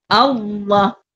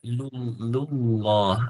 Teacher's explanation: Bila tebal, pangkal lidah menaik. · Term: lam tebal